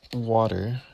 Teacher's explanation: the alveolar tap, as in water.